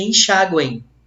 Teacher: Semivogal, vogal no meio, só que esse M tem som de I. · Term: tritongo nasal